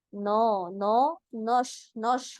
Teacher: उसकी पहली वजह तो ये होती है कि इस वक्त मुंह की कंडीशन जो है ना, यानी होठों की कंडीशन जो है थोड़ी सी गुलाई में आ जाती है, जिसकी आवाज नो नो नौश नौश बन जाती है। यानी नून और शीन दोनों पे ही आपके होठ थोड़े से आगे से गोल है, जिसकी वजह से नौश नौश आवाज आ रही है